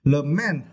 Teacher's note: You also need to stress the second syllable